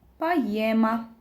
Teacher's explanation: Poema oldu. Poyema formasında tələffüz olundu.